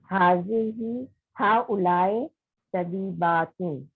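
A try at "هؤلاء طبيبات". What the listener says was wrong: हाउलाई ई, थोड़ा सा ना, हाँ, ए जो होता है ना वो अरबी में नहीं होता, ई होता है। तबीबातुन, सही है।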